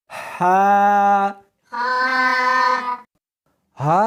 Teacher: اس کو حلق میں سے نکالنا ہے اور ساتھ میں ہوا بھی ہونی چاہیے۔ ہا نہیں پڑھنی بلکہ اس کو حلق میں سے نکالنا ہے، سینے میں سے نہیں نکالنا۔